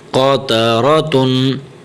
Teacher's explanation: قاف زبر قو، تا زبر تا، قاتا، را زبر را، قاتر، تا دو پیشتن، قاتراتن، ٹھیک ہے۔ قاف بھی موٹا ہے یہاں پر اور یہ را بھی ہمیشہ موٹی پڑی جائے گی